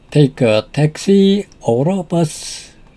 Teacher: Notice the rising intonation on taxi, the first choice, and falling intonation on bus.